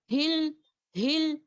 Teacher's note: हा को अक्सल हलक से करेंगे